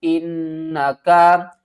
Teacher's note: حمزہ کو نون سے ملائیں گے، نون مشدد ہے، یہاں پر غنہ کریں گے